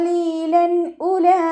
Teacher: ലാമിന് ഫത്തഹ് തൻവീൻ വന്നു തൻവീനി ശേഷം ഇവഹാറിന്റെ ലെറ്റർ ആയിട്ടുള്ള ഹംസ വന്നിട്ടുണ്ട് തൻവീനിലുള്ള നൂനിനെ വ്യക്തമായിട്ട് ഉച്ചരിക്കുക വ്യക്തമാക്കി മണിക്കാതെ ഉച്ചരിക്കുക